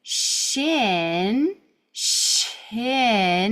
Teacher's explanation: I'm using my breath before I go into my vowel, before I turn on my voice for my vowel.